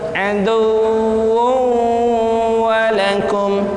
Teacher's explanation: Wu tanwin bertemu dengan waw, itu hukumnya idgham bi gunnah